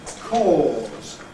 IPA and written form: kɔːz (cause)